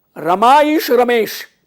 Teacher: आ और ई मिलके ए हो गया